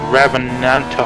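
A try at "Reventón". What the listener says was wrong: It's actually the Rebenton. It's not Reventon, it's Rebenton. It's a B. It's got a V, but it's pronounced with a B.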